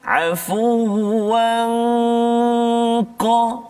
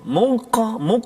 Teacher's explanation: Jadi dengung dia tu dibunyi seolah tebal sikit bunyi dia sebab huruf qaf isti'la kan. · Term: ikhfa hakiki